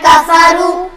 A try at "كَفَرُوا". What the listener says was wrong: را موٹا پڑھا جائے گا، كفروا